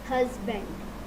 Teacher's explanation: ہس پہ اسٹریس ہے, بینڈ پہ اسٹریس نہیں ہے